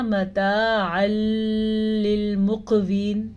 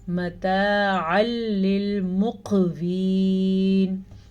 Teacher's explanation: نون ساکن یا تنوین کے بعد لام یا را میں سے کوئی حرف آ جائے تو وہاں پہ نون ساکن اور نون تنوین کو ختم کر دیتے ہیں، ان کو آپس میں ملا دیتے ہیں اور غنے کے بغیر ملاتے ہیں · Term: ادغام بلا غنہ